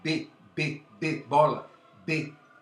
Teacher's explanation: duas são bilabiais, dependem dos lábios, mas você percebe que o B, bola, B, ele faz umas certas cócegas aqui nas cordas vocais.